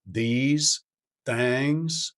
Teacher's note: You will tend to hear the THs becoming D and T like these, things.